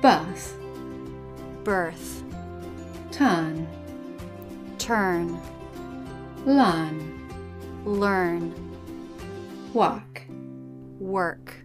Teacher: when the letter R is in the middle position, in a monosyllabic word and after a vowel, in British English, we tend to drop it.